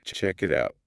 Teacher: native speakers push that final consonant sound onto the next word. So, the K in check moves over to it. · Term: linking